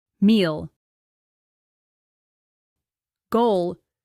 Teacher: the English L at the end of a syllable is pronounced with the tongue staying in contact, not snapping off